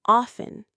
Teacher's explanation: Some say the T, but most Americans drop it, saying often